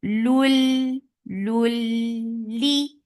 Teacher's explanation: this is idgham without gunna, so you are not keeping the sound in your nose at all. Don't keep it in your nose.